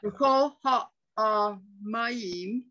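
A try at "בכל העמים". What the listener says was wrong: No, there's no ah under the mem. B'chol ha'amayim. No ah. Ma. Ha'amayim.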